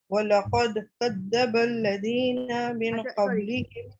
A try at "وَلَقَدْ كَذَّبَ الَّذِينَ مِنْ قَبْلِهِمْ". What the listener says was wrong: لقد میں نا لام موٹا ہو گیا، لام لائٹ رہنا چاہیے، قاف موٹا ہونا ہے. وَلَقَدْ